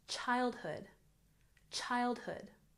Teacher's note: childhood put the emphasis on the first syllable